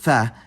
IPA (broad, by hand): θ